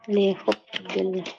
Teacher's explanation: pengucapan huruf h, makhrajnya dari tengah-tengah tenggorokan ya.